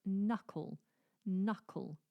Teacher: k but that is silent ah how useful are English languages so knuckle has an n Sound but starts with a k